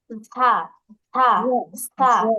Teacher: দেখেন পাখির মতো একটা আওয়াজ, সিসি একটা আওয়াজ হচ্ছে।